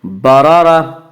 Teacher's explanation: اس کا قاعدہ یہ ہے کہ را کے اوپر زبر اور پیش آئے تو را کو پر پڑھیں گے، را کے نیچے زیر آئے تو را کو باریک پڑھیں گے۔ یہاں دونوں را کے اوپر زبر ہے، اس لیے را کو پر پڑھا جائے گا